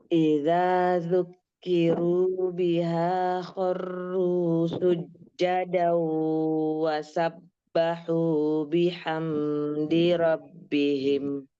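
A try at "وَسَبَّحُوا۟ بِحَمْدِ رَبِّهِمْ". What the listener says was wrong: Tamam, tapi mim sukunnya jangan dibaca panjang, jangan ditekan panjang ya.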